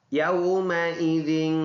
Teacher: یومئذ یہ حمزہ ہے، نیچے ہے، اس کے نیچے زیر ہے، یومئی، اور ذال ان حروف میں سے ہے جو نرم ادا ہوتے ہیں۔ زبان کو تھوڑا سا نکال کر سامنے کے دانتوں کے سروں کے ساتھ لگا کر ذال نرم ادا ہوتا ہے